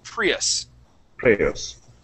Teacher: Just remember, it is going to be Prius with the accent at the very beginning.